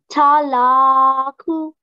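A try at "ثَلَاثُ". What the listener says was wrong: Okay, so it's tha. Thalathu. It's not tha, tha. It has three dots. Thalathu. Try to practice the tha.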